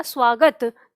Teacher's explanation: जैसे ही हम दंत स के तुरंत बाद व का उच्चारण करते हैं तो हमें ये स और व के बीच में ऊ की ध्वनि सुनाई देती है